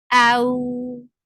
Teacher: This is lean, and lean has to be 2 counts long, and it should be said in a very soft manner.